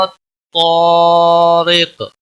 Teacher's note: حروف مستعلیہ کے بعد اسی کلمے میں جب ساتھ میں الف ہوتا ہے تو وہ بھی موٹا پڑا جاتا ہے۔ قاف وقف کی صورت میں ساکن ہوگا، اس پر قلقلہ بھی ہوگا، اور قاف حروف مستعلیہ میں سے بھی ہے، پر پڑا جائے گا۔